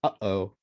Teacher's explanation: it's the sound in between the uh and the o oh so it's like a glottal stop